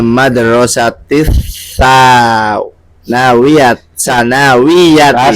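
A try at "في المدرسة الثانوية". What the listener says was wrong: Salah lagi. Karena anu fa itu pendek. 2 kali pendek.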